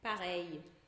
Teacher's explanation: esse L, que é um I curtinho, que já vai emendado num outro I que tinha antes. Então a gente pega aquele I e emenda um I curtinho.